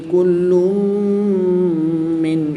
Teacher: دو پیش کی تنوین کے بعد میم حروف یعملون میں سے ہے تو یہاں پر ادغام مع غنہ ہوگا یعنی غنہ کر کے پڑھیں گے۔